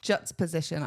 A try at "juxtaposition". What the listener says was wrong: You said juxtaposition. You missed the t.